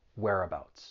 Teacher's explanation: there are three syllables the stress is on that first syllable